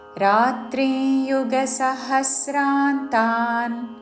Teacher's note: అనుస్వారము త వర్గంలోని అనునాసిక ఉచ్చారణ